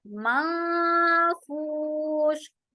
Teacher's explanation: नून की आवाज को कंप्लीटली हम यहाँ हाइड कर देंगे। माफूश, और श करते हुए आवाज में खलखला नहीं होगा, राइट। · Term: इख्फा